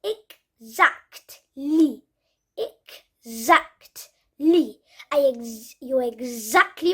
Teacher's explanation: the tee is basically silent